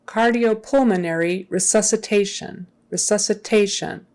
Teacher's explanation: resuscitation resuscitation usually when there's an asan on the end this the stress is on that second to the last syllable